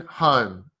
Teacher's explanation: So the O sound in Australian is more open and wider. O. The mouth, the jaw drops a bit lower. O. And the mouth is round.